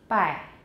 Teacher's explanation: it sounds strange in Mandarin because the Mandarin sound is not voiced.